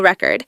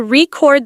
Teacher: If you stress the first syllable, it's a noun, like a vinyl record. But if you stress the second syllable, it's a verb.